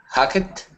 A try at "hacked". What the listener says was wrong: Yes, hacked. We don't say the ed on the end. It's hacked. It's almost like a t on the end. Hacked.